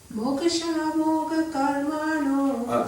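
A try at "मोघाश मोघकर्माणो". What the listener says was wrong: Just the first A is long one. Second A is also long. Moghasha, long.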